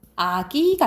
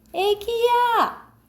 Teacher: 이 모음 역행동화 이의 영향으로 아가 애 발음 낸다 이 말이야. 전설 모음화라고 해요.